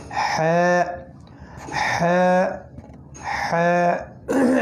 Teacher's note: একদম গলার মাঝখান থেকে